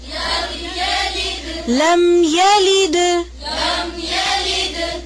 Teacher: لام کی زیر کو باریک کریں